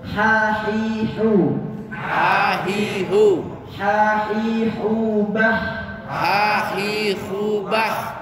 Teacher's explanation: ha itu di tengah tenggorokan. Tempatnya di jakun.